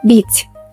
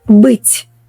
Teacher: The only difference is softness, but the meaning changes dramatically. My advice is to listen carefully and exaggerate the softness at the beginning, just like children do when they learn speaking. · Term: soft and hard consonants